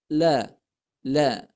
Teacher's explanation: makhraj lam itu terdapat pada ujung lidah kita menempel ke langit-langit yang ada di belakang pangkal gigi la la nah ketika ditempelkan digeserkan atau disimpangkan ke samping Nah